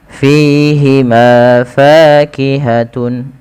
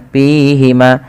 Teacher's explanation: fa memiliki salah satu sifat hamz yang dimana ketika melafalkannya harus mengalirkan nafasnya. Dan teman-teman tidak boleh menggunakan huruf P, ya, jangan dibaca dengan pihima. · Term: hams